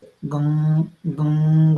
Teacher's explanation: अनुस्वार में केवल साउंड जो है या एयर जो है वो हमें केवल नाक से आती है, मुंह से नहीं आती, क्योंकि मुंह में कुछ हर्डल महसूस होता है, कुछ प्रॉब्लम, ऐसा लगता है कि कुछ अंदर से कंजेशन हो रहा है।